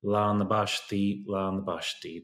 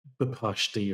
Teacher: So the BP, the B has been added for grammar reasons. So we don't hear the original P in the word páistí. We just hear the new letter, the B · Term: eclipsis